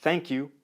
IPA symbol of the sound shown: θ